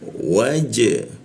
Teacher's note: Di bawah hidung, ujung lidah, makanya ra, bibir bertemu bibir, bana, masuk ke na di bawah hidung dia, nah, wa masuk ke ja, ja itu warna biru ya, biru itu artinya ketika mati kita pantulkan, huruf ja itu dipantulkan ke arah e dia